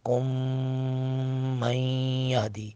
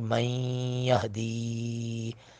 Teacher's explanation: من نون ساکن کے بعد یا حروف ادغام میں سے، یہاں پہ بھی ادغام باغنہ کریں گے